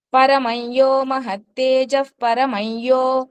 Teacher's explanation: య ముందు వచ్చిన అనుస్వరము ఈ య కి పొల్లు కింద పలుకుతాము